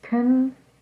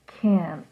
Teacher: don't listen for the letter T listen to the length of the word